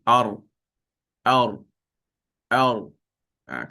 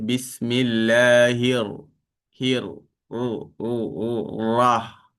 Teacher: bahagian hujung lidah bertemu bahagian lelangit atas hampir ke tengah lelangit, keluar daripadanya huruf ra